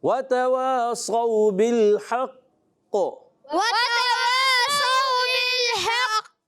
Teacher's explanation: قلقلہ کرنا ہے، جماؤ کے ساتھ کرنا ہے، اور حرف قلقلہ میں سے قاف، حرف مستعلیہ میں سے بھی موٹا بھی رکھنا ہے، مگر قلقلہ بھی جماؤ کے ساتھ۔